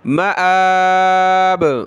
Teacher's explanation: یہ لفظ ہے دیکھیں، مآب، میم زبر ما، حمزہ کھڑا زبر آ، با دو زیر بن، مآبن، حمزہ کو کھینچیں یعنی میم کو نہیں، ٹھیک ہے، مآبن، جب رکیں گے تو با پر قلقلہ ہو جائے گا، مآب، بہت سارے اس کو ماب پڑھ لیں گے، ماب یعنی میم کو کھینچ لیں گے اور حمزہ کی الگ سے نہیں پڑھیں گے، حالانکہ یہ تین لفظ ہیں، میم، حمزہ، با۔